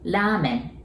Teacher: And as you notice, it starts with R. We don't have R sound in Japanese, so we pronounce it like L, right?